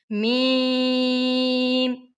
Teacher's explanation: ہونٹوں کا باہر والا جو خشکی والا حصہ ہے جب وہ دونوں آپس میں ملیں گے تو میم ادا ہوگا